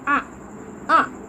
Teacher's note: Alif tegak dibaca panjang dua harakat dan hukum bacanya Mad Thobi'i